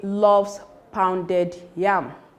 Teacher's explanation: The emphatic stress is on pounded.